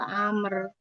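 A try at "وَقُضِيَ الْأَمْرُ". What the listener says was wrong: Nah, roknya tebal. Karena roknya kan jadi sukun. Huruf sebelumnya terdekatnya fathah. Kemudian harus berhati lagi terkait huruf ro yang pertama getarnya dia nggak boleh terlalu banyak. Nah, nggak boleh amr.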